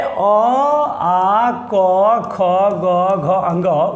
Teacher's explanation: अ, आ और क वर्ग का उच्चारण स्थान कंठस्थ हैं और इनका उच्चारण कंठ से होता है और इसे कंठस्थ वर्ण कहते हैं।